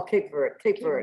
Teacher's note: in Creole, you leave off the last vowel